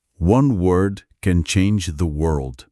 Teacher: Se o L não enrolar lá no céu da boca em world, você simplesmente diz que uma palavra pode mudar a palavra.